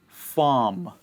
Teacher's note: The R sound is followed by a consonant. And so we eat it. We don't say the sound. We just say farm.